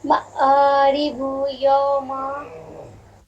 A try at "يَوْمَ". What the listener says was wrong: یو نہیں، یو مجہول ہے. یوم